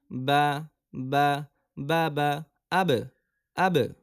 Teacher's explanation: দুই ঠোঁটের ভেজা জায়গা হতে উচ্চারিত হয়